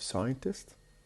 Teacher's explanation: So we have scientist, the stress on the beginning.